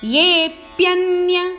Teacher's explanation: ಎ ಮತ್ತು ಯ ಎರಡು ಅಕ್ಷರದ ಮೇಲೆ ಆಘಾತ ಇದೆ ಅದನ್ನ ಸ್ವಲ್ಪ ಒತ್ತಿ ಹೇಳಬೇಕು